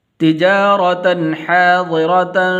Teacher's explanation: یہاں پر غنہ نہیں کریں گے اس لیے کہ آگے حا یہ حروف حلقی میں سے